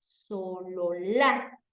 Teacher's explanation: la fuerza de voz va en la última en el último vagón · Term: aguda